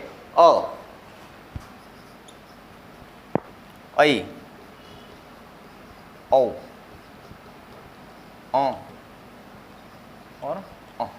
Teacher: हमारा जो मुख द्वार है वो पूर्ण रूप से खुला नहीं होता है, वो होता है आधा, मुख द्वार आधा खुला रहता है, तो उसे हम कहते हैं अर्धविवृत स्वर।